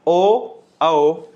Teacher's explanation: अंत में 2 बच गए ओ औ, ये दोनों वृत्तमुखी होंगे, दोनों में ही होठ गोल हो रहे हैं